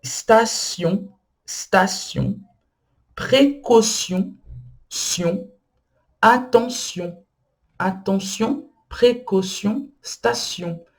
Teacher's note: Então, são palavras que parecem que são ditas de uma maneira, mas são ditas de outra maneira, porque o T, nesse caso, tem o som de dois S, ou som de C cedilha.